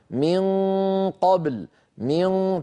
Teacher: تجدون بأن الصوت مفخم مع أنه ليس ثمة صوت يمر عن طريق الفم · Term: غنة